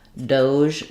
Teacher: some people pronounce that one Doge with the J sound like measure